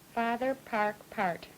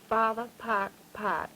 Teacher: A good stout retraction of the tongue. sort of curled back when you say park in park.